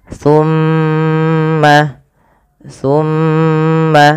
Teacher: zakawata kemudian tumma tawitum illa qilaminkum pada laf tumma ditahan dulu lafal mimnya ditahan jangan langsung di lepaskan